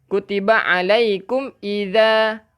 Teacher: hujung lidah keluarkan sikit untuk za